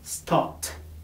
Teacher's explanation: For example, stop. The last sound is p, and p does not produce vibration. Therefore, the pronunciation would be stopped.